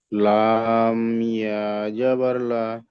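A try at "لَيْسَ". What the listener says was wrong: লাম ইয়া জাবার লাই হবে, লা হবে না। লাম ইয়া জাবার লাই। ইয়া বলতে হবে না। ইয়া তো লামের সঙ্গে পড়ে নিচ্ছেন। লাম ইয়া জাবার লাই। বাকি থাকছে শুধু সিন। লাইসা।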